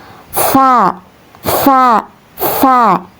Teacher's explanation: Cara melafalkannya tsa ya. Karena ee huruf tsa ini keluar dari ujung lidah dan menempati dengan ujung dua gigi seri atas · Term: huruf sa